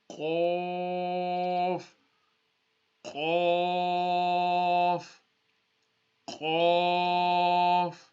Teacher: Yeah, so the throat is divided into three: the top part, the middle part, and the bottom part. The qaf is pronounced from the top part of the throat.